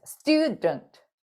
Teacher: 강세가 있는 이 음절은 stew 하는데 얘는 모음이 있어도 강세가 없기 때문에 거의 대부분 스왓 사운드로 처리하시면 돼요.